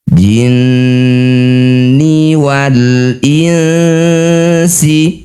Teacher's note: Setiap ada nun atau mim bertasydid disebut bacaan gunah musyaddadah. Bunyi nunnya didengungkan dulu dua harakat ya atau satu alif.